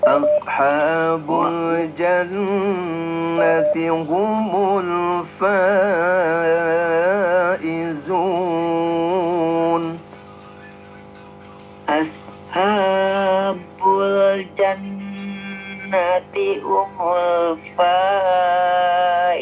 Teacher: Fa-nya mad wajib mutasil. Halo, fa-nya mad wajib mutasil 4-5 harkat kurang panjang